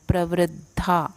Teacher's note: द पूरा दिख रहा है पर द आधा, ध पूर्ण बोलना है